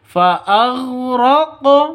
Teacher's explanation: Di sini ada qaf. Qafnya sukun, berarti ini qalqalah. Qalqalah apa? Ada di tengah, qalqalah sughra. Harus dipantulkan ke qafnya.